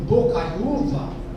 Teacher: mas a sílaba forte está na penúltima sílaba